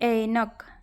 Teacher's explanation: ऐ और औ का उच्चारण मूल स्वर की तरह होता है